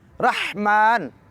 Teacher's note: رحمہ کی میم کو 2 حرکات کے برابر لمبا کریں گے